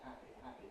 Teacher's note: So the voicing is off, on, off, on. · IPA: [ˈhæpi]